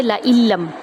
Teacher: حمزہ کو ہم لام میں داخل کریں گے، لعلم، لعنم نہیں پڑھیں گے، لعلم۔